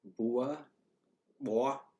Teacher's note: that sounds like a W there instead of an ooh